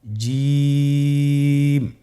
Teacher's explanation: এর মাখরাজ হলো জিহ্বার মধ্যখান তার বরাবর উপরের তালুর সঙ্গে লাগিয়ে উচ্চারিত হয় আপনারা পিকচারে ছবিতে দেখতে পাচ্ছেন যে জিহ্বার মধ্যখান তার বরাবর উপরে